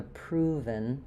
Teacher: In proven, I'm not really doing a strong eh there, not proven, but rather proven.